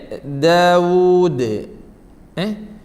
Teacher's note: മൂന്ന് അക്ഷരങ്ങൾ പറയുമ്പോഴും നമ്മുടെ നാവിൻറെ തലഭാഗം മേലെ മുൻപല്ലിന്റെ മുരടിൽ തട്ടിയിട്ടാണ് പറയേണ്ടത് നാവിന്റെ തല മേലെ മുൻപല്ലിന്റെ മുരടിൽ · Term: ദാൽ